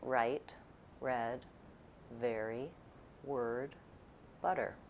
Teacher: The American R sound is made with the back of the tongue tight and braced against the inner upper teeth. The tongue tip can be down, or some Americans also use a retroflex R, making the same R sound by curling the front of the tongue back.